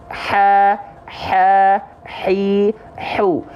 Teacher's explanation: H kecil keluar dari yang namanya wastul halqi. Wastul halqi itu artinya tengah tenggorokan, tepatnya pada bagian area yang warna ungu. · Hams ini artinya adalah mengalirkan nafas. Karakteristik nafas yang akan keluar dari huruf H kecil adalah berbisik.